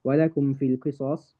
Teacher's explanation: I've then taken away the dhamma from the sad because of my pause. My pause has taken away the dhamma from the sad. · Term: mad arid lis-sukun